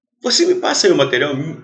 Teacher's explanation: Quando a gente fala, o brasileiro, ele engole, ele transforma o me em MI. Mas fraquinho mesmo. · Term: átono